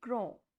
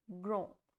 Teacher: last consonant will not be pronounced and the sound of N is there. So, the pronunciation will be grand, nasal sound, grand.